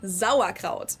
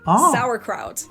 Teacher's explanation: we pronounce the S at the beginning of the word like a Z sound